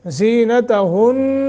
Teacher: یہاں نون مشدد ہے غنہ کریں گے